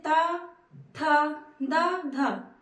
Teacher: द ध ये दंत यानी कि इनका उच्चारण स्थान दंत है जब भी बोलेंगे त थ द ध तो हमारे जीभ का अगला भाग दांत को टच करता है